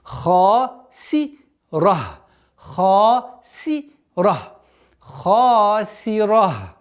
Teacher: Керратун ха. Твердое произношение ха. И долгота, которая подчиняется ему, в размере двух огласовок удлиняем фатха.